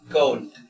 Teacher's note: esta palabra se dice, puede ser como una A tendiendo a O puede ser una O tendiendo a A. Puede ser cold o cold.